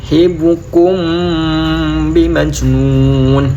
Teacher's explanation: Hibukum, itu ada bacaan ikhfa safawi, di mana mim sukun bertemu ba, baca dengung juga.